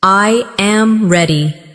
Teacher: The voice falls naturally at the end.